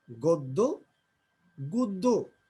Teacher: দয়ের সাথে জফলা থাকার কারণে আদ্য অধ্বনি ও এর মধ্যে উচ্চারণ হচ্ছে